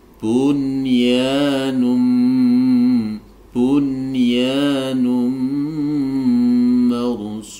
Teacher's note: Jadi nun sukun bertemu dengan ya ini tidak boleh didengungkan, tapi wajib dibaca idhar, wajib ya, jelas.